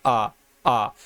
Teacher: अगर मान लीजिए ये जीभ है, जीभ के अगर 3 पार्ट करेंगे और ये आपका मध्य स्वर हो जाएगा, ये अग्र स्वर हो जाएगा, ये पश्च स्वर हो जाएगा। तो जब आप छोटा आ बोलेंगे ना, तो मध्य वाला आपका जीभ का मध्य वाला हिस्सा काम करेगा